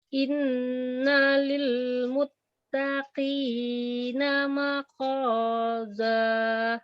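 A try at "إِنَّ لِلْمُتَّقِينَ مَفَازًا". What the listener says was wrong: Mafaza. Fa itu bukannya kok.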